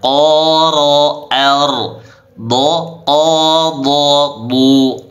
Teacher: huruf dha juga dibaca tebal, dinaikkan pangkal lidahnya. Du, begitu cara menebalkannya.